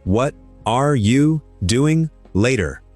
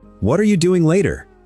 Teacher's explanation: And are you is almost a single sound in the middle. It's the most common question in social English, and it's mostly mush.